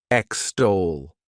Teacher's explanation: stress is on that second syllable.